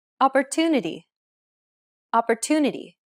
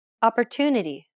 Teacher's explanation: The stress syllable to in opportunity is pronounced longer than all the other syllables.